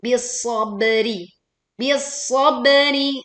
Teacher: ba sukun dibaca memantul dengan suara yang miring, pantulannya terdengar jelas.